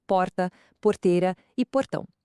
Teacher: Ela é famosa pelo Retroflexo ou o famoso R caipira. é aquela pronúncia bem marcada que enrola a língua em palavras como porta, porteira e portão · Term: R retroflexo